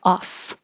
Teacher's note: it's an ah a short o ah sound and a real f sound